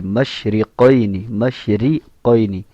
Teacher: شین کے اندر منہ کے اندر آواز پھیلے گی